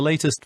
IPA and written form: ˈleɪ.t̬ɪst (latest)